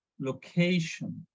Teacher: So normally, in plain language, we say location, but correct pronunciation is location. So we need to stress on ca, location